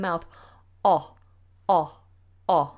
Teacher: so it's big and it's also quite far back